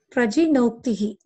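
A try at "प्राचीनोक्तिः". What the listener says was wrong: It is Prachi, not G. Prachi. Prachi Noktihi. Noktihi.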